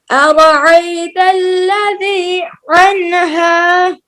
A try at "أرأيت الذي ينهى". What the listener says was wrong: ينهى ये या है ना।